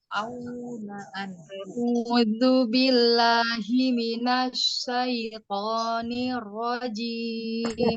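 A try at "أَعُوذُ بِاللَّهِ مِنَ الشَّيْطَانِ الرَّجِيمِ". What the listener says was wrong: Tebalkan lagi huruf to-nya.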